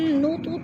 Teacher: تو پہ قلقلہ ہو رہا ہے، تھوڑا سا ہلا کر پڑھنا ہے